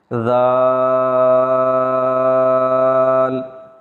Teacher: زبان کی نوک کو اوپر کے دانتوں کے کناروں پر لگا کر اگر ہم پڑھیں گے تو انشاءاللہ العزیز ہماری سیٹی کی آواز پیدا نہیں ہوگی